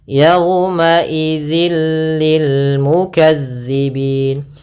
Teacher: idgham yang kita baca tanpa disertai dengan gunah maka cara membacanya yaitu suara tanwinnya masuk ke huruf lam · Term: Idam bila gunah